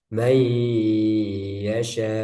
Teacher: Kemudian Mei itu didengungkan, guna ditahan.